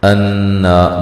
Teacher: نون مشدد پہ غنہ ضروری ہے، حمزہ کو تحقیق سے پڑھیں گے، نون پہ مد اصلی ہے، ایک الف کی مقدار کے برابر اس کو لمبا کیا جائے گا۔